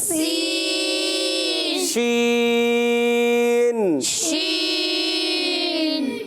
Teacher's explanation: منہ میں آواز پھیل جاتی ہے اس میں